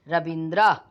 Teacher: ह्रस्व ई मिलकर दीर्घ ही बने हैं, तो रवि प्लस इंद्र दोनों में ह्रस्व की मात्रा है, तो बन गया दीर्घ ई